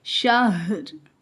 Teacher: ہا بھی حروف حلقی میں سے ہے، یعنی حلق سے ادا ہوتا ہے لیکن ہوا کے بغیر ادا ہوگا، جیسے شہر میں ہم شہر نہیں ادا کر سکتے، یعنی بغیر ہوا کے ہا کو ادا کیا جائے گا۔